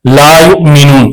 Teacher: حمزہ ساکنہ کو ہمیشہ جھٹکا دے کر پڑھیں گے